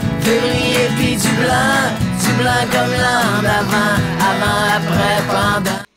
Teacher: c'est les sons en, encore une fois, très prononcés, nasale antérieure.